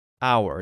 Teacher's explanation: it sounds it doesn't sound like how it sounds like hour it's a vowel sound even though there's an H there